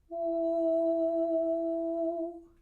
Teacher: The first is the Italianate U, where the tongue is all the way in the back and the overtones are not prominent. So that's ooh, and then all the way forward with the tongue, also still closed with the lips, we have U.